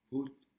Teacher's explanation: Avec une intonation qui descend